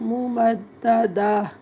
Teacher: گول تا ہے وقف میں ہا بن جاتی ہے